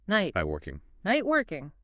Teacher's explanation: Instead of a clear released T sound or a flap, you kind of stop the air briefly at the T position in your mouth, but you don't release the puff of air